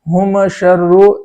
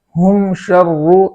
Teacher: میم کا جو جزم ہے وہ زبر نہ ہو جائے